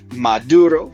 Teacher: Latin, maturum, ripe. Spanish voiced the T and got maduro.